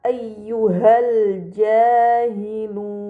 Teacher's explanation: lam pada lam qamariyah dibaca secara jelas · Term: alif lam qamariyah